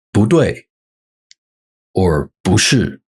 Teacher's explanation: before a fourth tone it becomes second tone